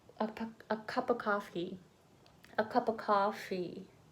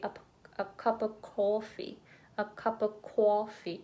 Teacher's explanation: I pronounce it ah, but maybe some people say oh, like a coffee on the East Coast, but West Coast probably coffee.